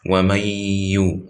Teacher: And since we said ya is a letter of ghunna, that means there should be a ghunna in the ya sakina, not the ya mutaharika. So the ghunna, which is two periods, by the way, two harakat.